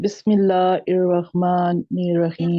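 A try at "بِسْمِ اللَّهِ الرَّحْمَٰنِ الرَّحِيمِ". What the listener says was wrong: रहमा नहीं है, हिर रहमा। हा जो है हमजा के मखरज से नहीं निकालनी, ये आप क्लास सुनेंगे तो आपको पता चल जाएगा। ठीक है, इर रहमा नहीं है। देखिए ऊपर ही लिखा हुआ हिर, हा, हिर रहमा।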